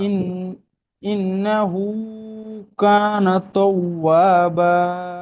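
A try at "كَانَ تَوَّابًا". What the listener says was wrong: তাও নয়, এখানে তা আছে, কানা তাও, তাও বা,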